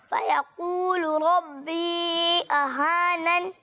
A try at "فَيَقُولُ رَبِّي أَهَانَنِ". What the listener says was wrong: माशाल्लाह मद को और खींच कर पढ़े दोबारा पढ़िए